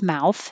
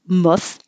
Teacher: if the word mouth is in the name of a town you never pronounce it mouth it's muff